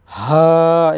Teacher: হলকের একদম শুরু থেকে হা এটা মোটা করে পড়তে হবে